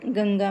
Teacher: शब्द में अनुस्वार प्रयुक्त है पंचम वर्ण प्रयुक्त होने के कारण गंगा का उच्चारण करने पर हवा मुंह के साथ-साथ नाक से निकलती हैं